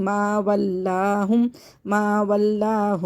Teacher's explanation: یہ لام ایکسٹرا ہے، اس لیے اس کو باریک کر کے پڑھیں گے